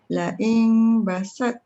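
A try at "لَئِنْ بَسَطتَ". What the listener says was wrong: Jangan la ing. Rapat bibir. La in basalta. Basalta. Nipis tau.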